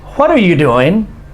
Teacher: see my voice is up and then goes down